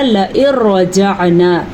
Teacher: را آنے کی وجہ سے نون ختم ہو گیا تو ہم نے پڑھا لئن رجعنا۔